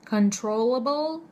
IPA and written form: kənˈtroʊləbl (controllable)